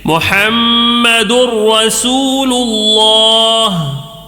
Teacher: محمد میم میں تو غنہ کر رہے ہیں لیکن دال میں غنہ نہیں کریں گے یا را میں غنہ نہیں کریں گے، کیونکہ ادغام تو ہے لیکن ادغام بلا غنہ ہے، بغیر غنہ کے پڑھنا ہے، غنہ ذرہ بھی نہیں کرنا ہے، ٹھیک ہے۔